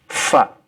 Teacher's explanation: huruf fa itu dari ujung gigi atas dengan perut bibir yang bawah. Fa ya, bukan seperti orang Indonesia, pa bukan ya.